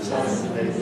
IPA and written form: ˈsʌdn̩li (suddenly)